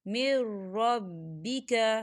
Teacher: یہاں دیکھیں نون ساکن ہے، نون ساکن کے بعد را آ رہا ہے، اور را جو ہے حروف یرملون میں سے ہے، تو یہاں پر ادغام ہوگا لیکن بنا غننے کے۔